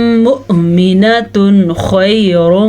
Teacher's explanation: درمیان میں ایک اظہار کا قاعدہ اور ہے، یہ ہمارے پاس تنوین ہے، تنوین کے بعد یا نون ساکن کے بعد خا آ جائے تو پھر اظہار کا قاعدہ ہوتا ہے، اس تنوین کو ہم نے ظاہر کر کے پڑھنا ہے اور بالکل غننے کے بغیر پڑھنا ہے